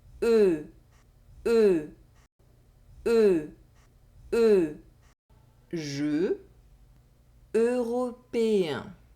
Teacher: Vowel [ə] or [ø] Think about the English word “bed”, and pronounce the sound [e] with your lips pursed and forward as you’re trying to blow a candle.